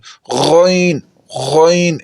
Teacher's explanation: آخری 2 حروف ہیں غین اور خا، یہ حروف گلے کے اوپر والے حصے سے ادا ہوتے ہیں جو منہ کی طرف سے ہے، جہاں زبان کی جڑ ہے وہاں سے یہ حروف ادا ہوتے ہیں۔